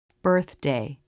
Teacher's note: Watch the tongue tip come in and flip up for the D. This is a quick move of the tongue that you can practice over and over to make it more natural.